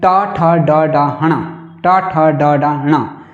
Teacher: ट ठ ड ढ ण का जो है यहाँ पे जो ये 5वां वर्ण है, इसका आपने पढ़ा था ऋतु रसाणाम मूर्धा, ऋतु रसाणाम मूर्धा, ट ठ ड ड ण, टू से ट वर्ग, ट ठ ड ड ण, तो इसका उच्चारण स्थान मूर्धा भी है और यम गणना नाम नासिका च सूत्र से जो है नासिका भी है, तो मूर्धा नासिका ये दोनों हुआ।